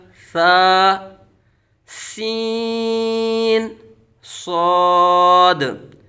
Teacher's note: सीन हरूफ सफीर में से है सख्ती से सीटी की तरह तेज आवाज निकलेगी